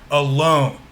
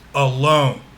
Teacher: We emphasize the second syllable.